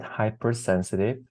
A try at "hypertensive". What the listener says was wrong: Because you had said hypersensitive. But that makes sense because sometimes your eye just sees the start of something and kind of finishes it up.